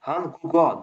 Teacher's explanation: O'sha qoida bo'yicha oldingi undosh, oldingi bug'un undosh bilan tugab, undan keyingi bug'un unli bilan boshlansa, oldingi bug'unning pachimdagi undosh keyingi bug'unga o'tadi. Ya'ni bu yerda yok harfi oni oldiga o'tyapti.